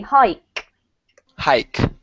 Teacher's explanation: hike with a really strong K